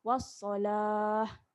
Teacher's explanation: Kalau kita nak berhenti di wassalah, kita matikan ta ni. Ta ni kita matikan macam kita sebut ha.